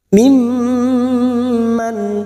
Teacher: huruf mim dan mendengung selama dua atau tiga harakat Nam mim mim yang bertasdid kita dengungkan selama tiga harakat · Mim yang bertasdid kita dengungkan selama 3 harokat.